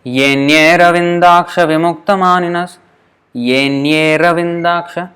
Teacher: When we are chanting the verse, Ye Nye Ravindaksha Vimuktamaninas, Ye Nye Ravindaksha, it is actually as if the A is not there. So that's how you chant when you chant it together as a verse, when all the words together.